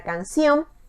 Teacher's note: lleva la mayor fuerza de voz en la última sílaba